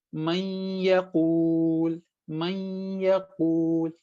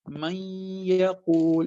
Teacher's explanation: If you say this, man yaqul, man yaqul, tip of your tongue is not touching anywhere. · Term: idgham